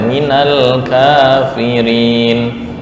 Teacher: Ka hanya dua harokat ya